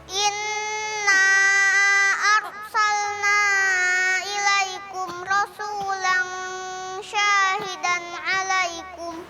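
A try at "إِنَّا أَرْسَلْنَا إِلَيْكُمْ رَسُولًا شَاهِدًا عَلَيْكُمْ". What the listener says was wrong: Ya, jadi tadi di rasulan syahidan. Ketika ada nun sukun atau tanwin ketemu dengan huruf-huruf ikhfa yang 15, itu ada gunnahnya, ada dua.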